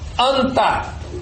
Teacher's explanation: Nasal, dental, só pode vir antes de consoante dental.